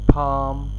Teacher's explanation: palm in RP gives a longer open vowel sound